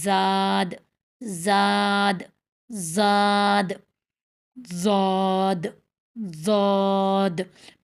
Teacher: زاد باریک حروف میں سے ہے تو منہ چوڑا کریں گے